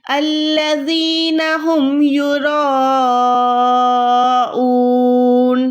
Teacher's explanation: اس کو کھینچنا ہے اور را موٹی ہے تو اس کے ساتھ والا الف بھی موٹا ہو جائے گا